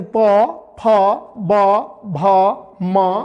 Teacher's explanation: प वर्ग यानी प, फ, ब, भ, म, उ और दीर्घु, इसका उच्चारण स्थल जो है ओठ है। हम ओठ से बोलते हैं इनको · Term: ओष्ठ